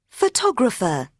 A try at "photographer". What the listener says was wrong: So photographer, it's correct with ER.